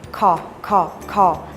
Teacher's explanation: ให้ห่อริมฝีปากแล้วยกโคนลิ้นพร้อมพ่นลม